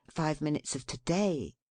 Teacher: Make 5 minutes of to-day 1 word, and accent the last syllable thus